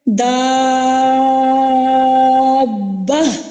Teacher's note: اس کے فوراً بعد تشدید ہے جو کہ سبب مد ہے. اب تشدید کی وجہ سے ہمارا جو حروف مدہ ہے اس پہ ہم نے آواز کو دراز کیا طول کے برابر